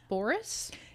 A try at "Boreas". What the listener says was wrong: It's not Boris. It has an E in it. See? Boreas. Boreas.